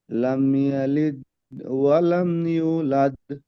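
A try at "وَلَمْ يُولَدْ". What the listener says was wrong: ইউ টান হবে, ইউলাদ, ওয়াও মাদ্দা, ও সেখানে ডান দিকে পেশ আছে।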